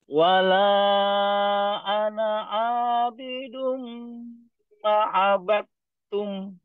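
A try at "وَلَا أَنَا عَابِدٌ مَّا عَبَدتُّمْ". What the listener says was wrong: Maknya panjang.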